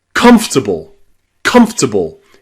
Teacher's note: The middle O is gone.